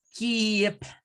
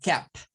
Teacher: Se pasan a una E nada más y el sonido I, el sonido largo que aquí tienen estas, pasa a ser un sonido corto de una E